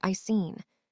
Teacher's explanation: I've seen sounds like I seen the have almost vanishes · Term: weak form ninja